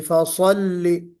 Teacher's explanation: صاد اس میں استعلاء بھی ہے، اطباق بھی ہے، اور چھوٹی سی سیٹی بجنی چاہیے